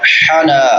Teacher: حا حلق کے درمیان میں سے وسط حلق سے حا